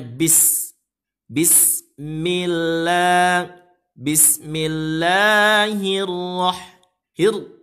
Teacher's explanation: Karena alif lamnya tidak terbaca, masuk pada huruf ra. Masuk pada huruf ra dengan tanda ra-nya ditasydid. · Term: alif lam syamsiyah